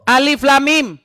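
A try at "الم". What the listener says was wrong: Salah. Orang baca itu pakai tajwid. Alif tuh enggak panjang. Coba baca masa alif kayak gitu.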